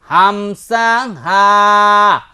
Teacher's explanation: হামজা এক নাম্বার মাখরাজ হলকের শুরু হইতে হামজা